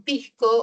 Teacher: la s se aspira